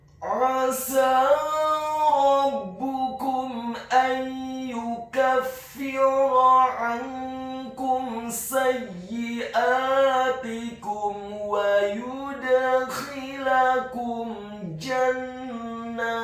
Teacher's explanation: huruf ain-nya ditekankan keluar dari tenggorokan bagian tengah fathah 1 harokat. Selanjutnya huruf sin-nya dibaca fathah 2 harokat karena harokatnya tegak, dan setelahnya seperti ada huruf ya sukun yang fungsinya menambahkan 1 harokat.